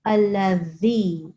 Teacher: This is not Z of the English language. This is a dhal. So put your tongue in between your teeth.